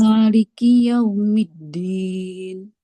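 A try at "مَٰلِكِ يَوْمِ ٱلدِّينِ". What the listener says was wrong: Maliki. Jangan Maliki. Maliki. Sekali ketukan. Sekali ketukan. Maliki. Maliki.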